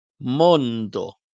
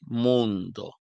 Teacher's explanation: Vejam que em Esperanto não fazemos som nasal. Mondo, mas em português, mundo.